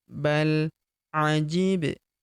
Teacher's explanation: Huruf ba berharokat sukun kita pantulkan atau kita qalqalahkan.